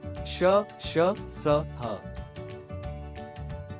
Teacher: इनका उच्चारण करते समय प्राणवायु मुख के भागों से घर्षण करती हुई अनुभूति देती है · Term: ऊष्म व्यंजन